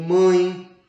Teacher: o ar da corrente respiratória além de sair pela boca também sai pelas nasais ocorre aí a vibração das narinas produzindo aquele som anasalado como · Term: ditongo